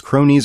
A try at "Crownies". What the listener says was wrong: Cronies has no W.